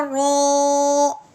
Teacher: اس رو کو ہم نے پر پڑھنا ہے کیونکہ اس کے اوپر زبر ہے. ہم نے پیچھے پڑھا تھا کہ رو کے اوپر زبر یا پیش آ جائے اس حرف کو پر پڑھتے ہیں.